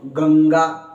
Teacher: जैसे आप बोल के देखो गंगा, तो गंगा में जो न गंग, जो अंग की आवाज आ रही है वो नाक से आ रही है